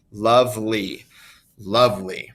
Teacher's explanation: we place more emphasis on the beginning of that word lovely